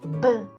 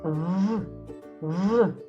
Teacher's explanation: In English, the V is fricative, which means the teeth and lips must touch when you say it.